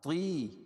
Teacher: یا ساکن سے پہلے زیر ہو تو یا مدہ، اس کو ایک الف کے برابر کھینچ کے پڑھتے ہیں